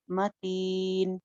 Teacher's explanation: मीम को जमा के गुन्ना नहीं करना